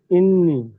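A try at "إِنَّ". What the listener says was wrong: এখানে একটা জাবার হবে, জাবারটি টাইপ আসেনি, পড়েন। নুন আলিফ জাবার না, ইন্না।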